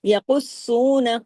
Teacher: قاف ہیوی سختی سے سواد سے جڑے گا، سواد بھی ہیوی